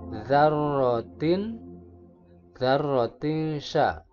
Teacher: Ini adalah ikhfa karena ada tanwin menghadapi huruf sya. Membacanya harus disamarkan.